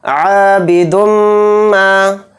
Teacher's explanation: عابد ما، عین کے ساتھ الف ہے تو عین الف زبر آ کو تھوڑا کھینچ کر پڑھیں گے اور دال کو میم میں ملا دیں گے، اور میم کے اوپر تشدید ہے تو میم میں غنہ کریں گے، اور میم کے ساتھ الف مدہ ہے تو میم الف زبر ما کو تھوڑا کھینچیں گے